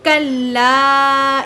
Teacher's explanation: اس کو ہم نے کتنا کھینچ کر پڑھنا ہے؟ 4 الف کے برابر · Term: مد منفصل